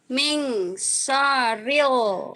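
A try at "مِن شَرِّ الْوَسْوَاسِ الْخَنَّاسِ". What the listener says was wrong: Syarril, R-nya kayak ditahan. Min syarril. Min syarril.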